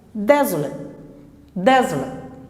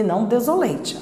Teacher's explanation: Esse ATE vai se transformar em schwa.